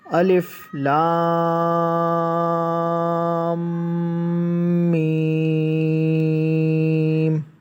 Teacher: اور یہ جو مد ہے اس کو 5 الف کے برابر کھینچا جاتا ہے. یہ الف لام میم نہیں اس طرح پڑھا جاتا. · لام کو میم سے ملائیں گے اور 5 الف کے برابر اس کو کھینچیں گے دونوں کو